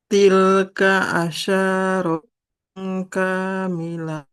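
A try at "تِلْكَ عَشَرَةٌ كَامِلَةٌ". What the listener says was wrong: Nah, shinnya nggak boleh panjang. Fathah nggak ada alifnya. Tilka asyaratun kamilah.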